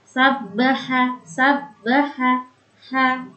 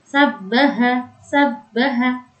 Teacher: makhrajnya keluar dari tengah tenggorokan, yang dia bersifat mengalir, bersifat hamas dan dia mulus, tidak ada kotoran